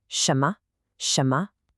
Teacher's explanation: The second syllable m has a neutral tone. That means it's short and light. It kind of falls off the first syllable.